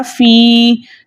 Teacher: फ़ा साकिन है, या साकिन है, उससे पहले किसी भी हर्फ के नीचे जेर हो ऐसी है या मद्दा कहलाती है। ठीक है, या मद्दा को 2 हरकत की मिकदार खींच कर पढ़ते हैं